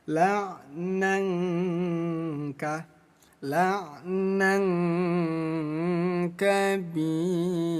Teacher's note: Ada tanwin bertemu kaf, hukumnya ikhfa. Ikhfa artinya samar. Jadi bunyi tanwin disamarkan ya.